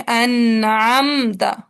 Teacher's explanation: मीम साकिना की आवाज को जाहिर करना है और आगे चल पड़ना है, गुन्ना को टाइम नहीं नहीं देना। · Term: इजहार शफवी